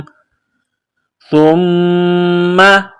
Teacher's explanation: سا زبان کا سرہ تھوڑا سا باہر نکالیں گے، سا کو نرم پڑھیں گے